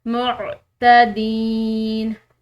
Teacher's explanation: لا يحب المعتدین، عین حلقیہ حروف میں سے، معتدین، یہاں پر دال کے بعد یا ساکن ہے تو ہم نے لمبا پڑھنا ہے اس کو